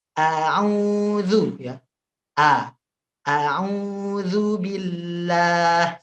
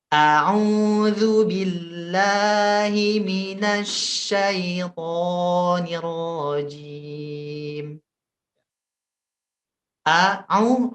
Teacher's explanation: dua harakat ya panjangnya dua karena ini mad asli